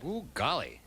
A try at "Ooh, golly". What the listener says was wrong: No, it's not, ooh, golly. That's more like you saw a mouse. Ooh, golly.